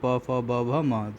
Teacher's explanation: प से लेके म तक के जितने वर्ण होते हैं प फ ब भ म, वे सभी कहाँ से उच्चारित होते हैं? ओष्ठ से होते हैं।